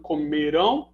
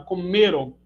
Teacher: a primeira é oxítona, comerão, e a segunda é paroxítona, comeram.